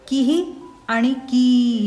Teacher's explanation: विसर्गाच्या आधी रस्व किंवा दीर्घ उकारांत शब्द असेल तर विसर्गाचा उच्चार रस्वहु सारखा करायचा · विसर्गाच्या आधी रस्व किंवा दीर्घ इकारांत शब्द असेल तर विसर्गाचा उच्चार रस्वही करायचा